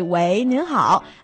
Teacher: It's usually used for the fourth tone. So the second tone is more like a habit kind of thing that you use solely for phone conversation.